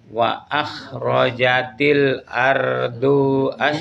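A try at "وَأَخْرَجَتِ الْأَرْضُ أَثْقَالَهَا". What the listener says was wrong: Dinya panjang. Ardu as langsung ke as.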